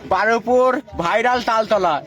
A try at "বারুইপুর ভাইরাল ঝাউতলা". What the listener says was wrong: তালতলা করে তোমার মাথাটা গেল। তালতলা, এটা ঝাউতলা। ভাইরাল ঝাউতলা।